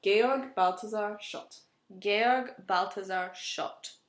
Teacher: in German the th is a t sound